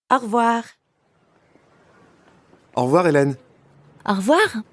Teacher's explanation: when French speakers say au revoir quickly, it can sound like one word.